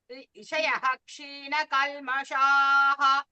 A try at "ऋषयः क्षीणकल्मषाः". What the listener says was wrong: First time you gave dirgha.